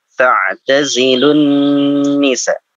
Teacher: Langsung dimasukkan, lamnya dimasukkan ke nun.